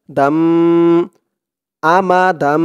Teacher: হচ্ছে ইকলাব তানবিনের পরে ইকলাবের হরফ একটি বা আসছে তাই এখানে এই তানবিনটাকে এই ছোট মিম দ্বারা পরিবর্তন করে পড়তে হবে